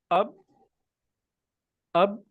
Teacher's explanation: تو اگر میں یہ کہوں حمزہ با زبر اب، اب جب میں اب بول رہا ہوں تو یہ ہمارے ہونٹ آپس میں جڑ رہے ہیں، مل رہے ہیں